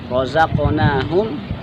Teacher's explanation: qaf sukun, berarti qalqalah dipantulkan qafnya.